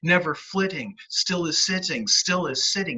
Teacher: it over the trochaic and that's because the trochaic rhythm goes you really bite down on that first syllable